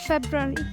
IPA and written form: ˈfebrəˌweri (February)